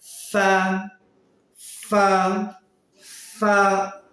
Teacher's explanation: আমরা এই ফাটি উচ্চারণের সময় আমরা আমাদের দাঁতকে আমরা এই ঠোঁটের মাঝ বরাবর রেখে দিব ফা ফা আমরা মুখের সামনে একটু হাত দিয়ে দেখব আমাদের বাতাস